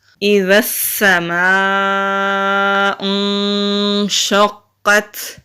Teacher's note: میم کے اوپر زبر ہے اور الف کے اوپر بڑی مد ہے۔ بڑی مد کو 3 سے 4 الف کے برابر کھینچ کر پڑھتے ہیں، یعنی کہ خوب لمبا کر کے پڑھتے ہیں۔